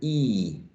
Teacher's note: E is a high front vowel sound.